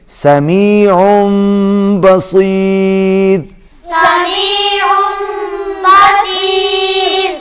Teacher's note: عین جو ہے تنوین کے ساتھ مل کر میم کے ساتھ ملے گی اور آواز ناک میں جائے گی۔